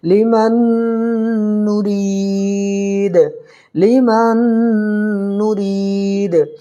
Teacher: یہاں دیکھیے یہاں قاعدہ کیا ہوگا، تنوین یا نون ساکن کے بعد یومین کے 4 حرفوں میں سے کوئی بھی حرف آ جائے تو ادغام مع الغنہ ہوگا۔ تو دیکھیے نون ساکن کے بعد یومین کے 4 حرفوں میں سے نون آ رہا ہے، اس لیے ادغام مع الغنہ ہوگا